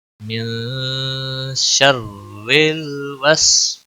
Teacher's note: یہاں پر الف مدہ ہے، ایک الف کے برابر کھینچنا ہے